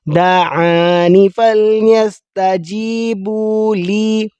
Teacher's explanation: لی تھوڑا سا کھینچیں گے ایک الف کے برابر